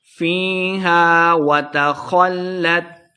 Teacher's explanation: فیہا فی یا مد ہے، 2 حرکات لمبا کرنا ہے۔ وتخلت، وتخلت خا کو موٹا پڑھیں گے، لام مشدد ہے، خا کو لام کے ساتھ ملا کے پڑھنا ہے